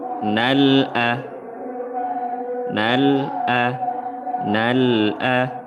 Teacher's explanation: Wassabiqunal, ada alif lam berjumpa dengan hamzah. Alif lam qamariyah, hukumnya izhar qamari. Baca jelas, jangan tawallud.